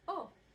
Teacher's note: We say it fast so you don't notice. In Italian, you just freeze your mouth in the beginning part of each vowel.